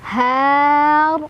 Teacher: Huruf yang disukunkannya ro, sehingga bacanya panjang, boleh 2, 4 atau 6. Har, ro-nya dibaca secara tafkhim karena ro-nya kan disukunkan.